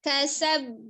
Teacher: Jadi dia jelas kolkolahnya tapi tidak berjedah. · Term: kolkolah kubro